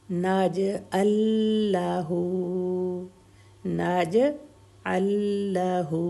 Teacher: نج نج اللہ، اب نج ال پھر لاہو ہے، جب لام ساکن آ گیا اور اس اگلا لام بھی ہے تو اس لام پر تشدید آ گئی، یعنی دونوں لام آپس میں مکس ہو گئے، ٹھیک ہے، اس لیے سیکنڈ والے لام پر تشدید ہے.